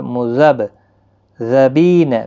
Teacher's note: مذبذبین بین ذالک، مذب با ساکن پر قلقلہ ہوگا، مذب ذبین، بی یا مدہ ہے، ایک الف کی مقدار کے برابر کھینچیں گے، بی یا لین ہے، تھوڑا نرمی کے ساتھ کھینچیں گے۔